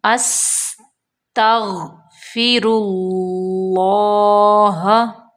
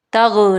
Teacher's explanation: غین کو موٹا کر کے ادا کرنا ہے اور قلقلہ نہیں کرنا